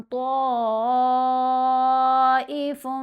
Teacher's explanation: اس مد کی پہچان کیا ہے کہ مد کے فوراً بعد آئین جیسا حمزہ ہوتا ہے، اور یہ دونوں مد اور آئین جیسا حمزہ ایک ہی لفظ کے اندر آئیں گے، ایک ہی کلمہ کے اندر آئیں گے، اور اس کی پڑھنے کی جو مقدار ہے وہ 5 حرکات کی مقدار کے برابر ہے۔ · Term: مد متصل